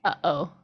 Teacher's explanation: for glottal my best example is how we say uh oh right that's both the glottal onset and an offset